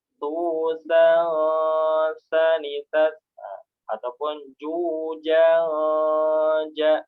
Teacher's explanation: huruf sa dan huruf ja ini dia istifal ya, tipis. Jadi ketika gunahnya pun juga mengikuti sifat hurufnya.